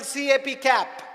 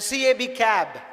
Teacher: Cap is ending in P sound. P is unvoiced consonant. Cab is ending in B sound. B is voiced consonant.